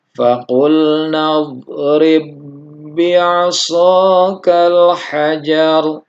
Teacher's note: Nah, di sini kita mendapati ada ba sukun bertemu dengan ba yang berharokat, maka ini dihukumi idgham mutamatsilain. Jadi tidak dikolkolahkan pada saat ba yang pertama yang sukun ini karena terjadi idgham. Jadi ini seolah-olah tidak ada ba yang sukun dan ba yang kedua diberi tasydid.